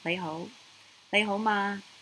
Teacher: The ma at the end is your sentence particle or final that makes it a question. So lei ho, ho actually goes up by itself.